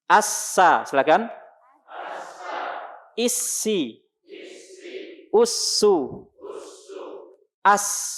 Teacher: Suara dalam mulut kita keluar melalui celah-celah sempit antara gigi seri atas dan gigi seri bawah. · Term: huruf sin